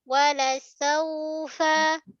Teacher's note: Okey, huruf lin jaga sifat lin, lembut. Dan juga waw ni juga suara dia mesti meleret, mengalir. Dia rokhawah.